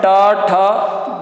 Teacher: बिल्कुल मुख की छत जहां जीभ टकरा रही है, मूर्धा